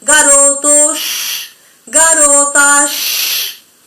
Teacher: Parece que están todo el tiempo pidiendo silencio por las S finales. Esto se llama chiada, el sonido que se produce.